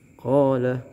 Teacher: mad tabi'i, mana fathah ketemu huruf alif, ini dibaca 2 harokat